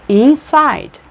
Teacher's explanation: É quase como se fosse duas palavras em português. A primeira é tônica, a segunda subtônica.